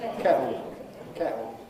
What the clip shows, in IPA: ˈkeʔo